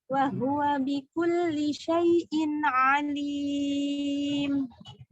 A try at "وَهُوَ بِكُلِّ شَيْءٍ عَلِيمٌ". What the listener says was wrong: Wahuwa bikulli syai'in alim. Berubah kecepatannya di situ.